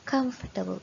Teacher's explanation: this word, just like vegetable, has an extra vowel that we don't need to pronounce.